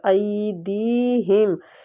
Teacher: ای میں یا لین ہو رہا ہے، دی میں یا مد ہو رہا ہے، تو ان دونوں کو کھینچنا ہے